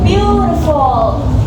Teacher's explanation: the first syllable is stress or strong and the next two are unstress · It also has three syllables, but this time the first syllable is stressed or strong, and the next two are unstressed or soft. For the word beautiful, we say view is stronger and the full is soft, like beautiful. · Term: Dactyl